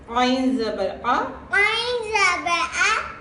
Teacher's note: عین is coming from middle throat. ٹھیک ہے, عین کو ہم الف کی طرح نہیں پڑھیں.